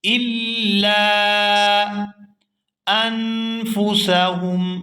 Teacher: یہاں نون ساکن پر اخفا کریں گے